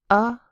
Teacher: The A, that's an unstressed vowel. A schwah sound.